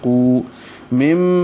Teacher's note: قو مم یہ غنہ ہے، آواز ناک کے بانسے میں لے جائیں گے. یہ من اور ما دونوں کو اکٹھا کیا گیا تو مم غنے کے ساتھ آگے الف مدہ بن گیا.